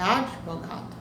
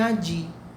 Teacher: não é adi, não tem o i, o d é mudo, é advogado